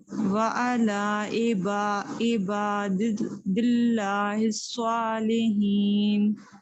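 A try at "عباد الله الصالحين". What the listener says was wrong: سوا نہیں ہوگا راؤنڈ لفٹ نہیں کریں. ایس اے ڈبلیو سو جیسے سین زبر سا بولے نا سین زبر سا سین میں زبر سا میں لپ سیدھے سا سو سا سو.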